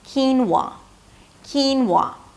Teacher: a high 'ee', 'keen', ended it with an /n/, that's the primary stress. And then it's a /w/ sound - 'whoa', and the /ah/ as in "father" - 'wah'.